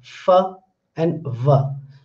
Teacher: when we pronounce fa and va, then you can see that my lower lip is touching upper teeth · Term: labiodental